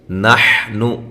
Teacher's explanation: حا کو واضح نکالیں، نون کو لمبا نہیں کرنا